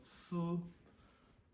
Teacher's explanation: you can hear a bit of a vibration behind my teeth when I say it. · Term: hum